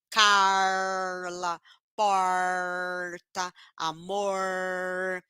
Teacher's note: vão fazer com R retroflex ó que faz uma curva na língua · E tem pessoas que são do interior, interior do Paraná, interior de São Paulo, né, interior de Minas, algumas cidades aí do interior, vão fazer com R retroflexo, ó, que faz uma curva na língua